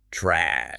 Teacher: in American English, this is what we call the ash vowel. It is aggressive. Your mouth opens wide and the back of your tongue drops.